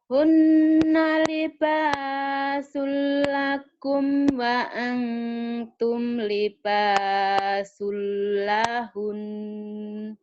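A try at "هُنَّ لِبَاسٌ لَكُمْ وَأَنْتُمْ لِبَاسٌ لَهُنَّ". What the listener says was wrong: Kurang nyamber ya. Jadi jangan lahun, tapi samberin dulu baru tahan. Lahun. Coba hentakin dikit.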